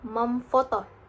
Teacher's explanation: Contoh pada kata foto meen foto sama memfoto n menjadi M karena F adalah bilabial